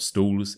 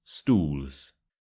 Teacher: the circle with your lips and it's oos oos oos stools the O is quite stretched out